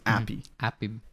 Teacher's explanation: she just dropped the H sound in the word uh Happy